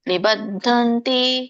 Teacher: ಧ ಮಹಾಪ್ರಾಣ ಇದೆ, ನವತ್ತಿದೆ.